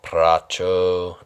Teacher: that's the pracho, that's the rolled R, and can take some practice, and it is not 100% necessary, but it's fun.